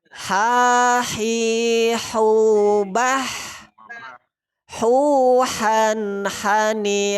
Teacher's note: masih huruf halqi tenggorokan bagian tengah Ya sifatnya disitu ada nafas berhembus jadi infitah rongga mulut terbuka kita bertanya langsung huruf ha ha